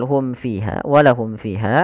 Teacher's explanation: huruf mim maka di sini berkaitan dengan hukum mim mati yaitu dengan bacaan jelas ya mimnya tidak boleh ditahan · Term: izhar syafawi